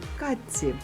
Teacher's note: Ци поглинає чи і маємо ц подовжений катці. Звук чи поглинає ти. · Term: поглинання